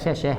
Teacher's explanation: ये उष्म व्यंजन है यानी कि इनको बोलने में आपके मुंह से गर्म हवाए निकलेंगी